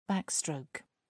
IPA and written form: ˈbækˌstrəʊk (backstroke)